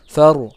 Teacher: Kemudian far. Nah, ro di situ adalah ro sukun dan sebelumnya didahului oleh huruf yang berharokat fathah, jadi ro-nya jadi tebal